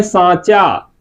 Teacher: यहां पर केवल मुख से स्वास निकल रही थी यहां पर मुख और नाक दोनों से स्वास निकलेगी लेकिन शर्त यह रहेगा कि मुख से ज्यादा स्वास निकलेगी और नाक से कम शवास निकलेगी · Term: अनुनासिक